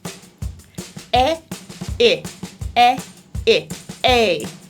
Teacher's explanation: My jaw moves, but my tongue stays in front for both parts of this diphthong, right behind my bottom front teeth. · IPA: /e/ /ɪ/ /e/ /ɪ/ /eɪ/